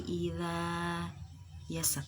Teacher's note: Zal makharijul hurufnya ada di roksul lisan, ujung lidah. Kemudian sifat-sifatnya jahar, rikhwah, istifal, infitah, dan ismat.